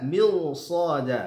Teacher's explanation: Karena ra-nya meskipun dia sukun, kemudian huruf sebelumnya dibaca kasrah karena di depannya bertemu dengan salah satu huruf isti'adah yaitu shad, maka ra-nya dibaca tebal atau tafkhim